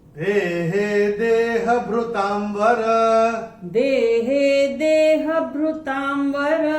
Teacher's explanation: और चौथे चरण में ता के ऊपर जो अनुस्वार आ रहा है उसके बाद का अक्षर है व, और ये अनुस्वार के बाद जब व आएगा तो अनुस्वार का उच्चारण होगा म